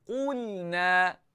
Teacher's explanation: Lam nipis, seringaikan bibir. · Qaf kekal tebal, jangan lupa. Okey, yang nipisnya lam. Yang tebal itu qaf. Qaf tebal qu.